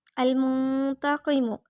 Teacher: نون ساکن اخفا کریں گے یعنی ناک میں آواز چھپائیں گے